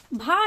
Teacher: भा है, ये ओष्ठ है, अर्थात इसका उच्चारण स्थान ओष्ठ है, ओठ से उच्चरित होती है